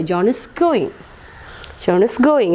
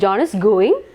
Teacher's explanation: So the pitch raises. So it is in rising tone.